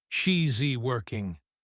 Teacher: We contract it to she's working. But often even the s is so soft it sounds like just a continuation of the vowel.